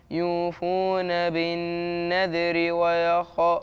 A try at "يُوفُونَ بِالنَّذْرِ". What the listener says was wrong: ما تقلقلش الذال يا سيد.